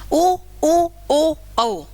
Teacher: जिनको बोलते समय हमारे होठ वृत का आकार बनाते हैं हमारे होठ गोल घेरा बनाते हैं